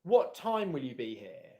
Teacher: I'm more likely to use a downwards intonation pattern.